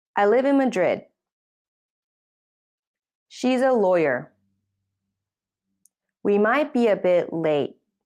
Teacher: you use a falling tone to show the end of a sentence